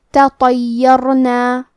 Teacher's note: کیونکہ را پہ جزم ہے تو حرف الرا کا حکم ہے تفخیم تو ہمیں حرف الرا کو موٹی آواز میں پڑھنا ہے. تطیرنا.